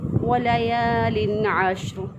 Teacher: اب تنوین کے بعد دیکھیں قاعدہ یہ ہے کہ نون ساکن یا تنوین کے بعد جب حروف حلقی میں سے کوئی حرف آ جائے تو وہاں پر اظہار ہوتا ہے، تو تنوین کے بعد عین آ گیا تو یہاں پہ تنوین کو ظاہر کر کے پڑھیں گے